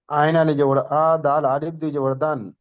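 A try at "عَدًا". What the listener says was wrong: আলিফ ধরতে হবে না, আলিফটা দুজাবারের সঙ্গে আলিফ থাকে, তা আলিফ ধরতে হবে না।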